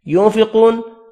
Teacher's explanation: ينفقون نون کا اخفا ہوگا، قاف پر پڑھیں گے۔ واو مدہ کو ایک الف کی مقدار میں کھینچ کر پڑھنا ہے، نون ساکن پڑھا جائے گا وقف کی صورت میں۔